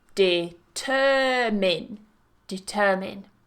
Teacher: watch that you're not moving that stress and you're not saying it as mine